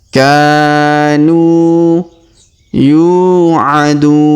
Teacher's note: Huruf yu kita panjangkan 2 harokat karena terdapat waw sukun di depannya.